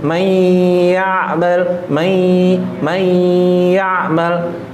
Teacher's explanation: Cara dengungnya dimasukkan ke hidung atau di al-khoisum. Rata-rata yang tidak masuk di ya dan wa, ini jarang yang ke al-khoisum.